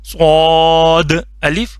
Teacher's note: सद मोटा करके पढ़ना है सीन की साउंड नहीं बनानी सा की साउंड नहीं बनानी स स मोटा करके सद अलिफ